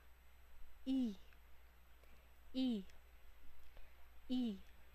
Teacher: ang I ay mataas at harap ng dila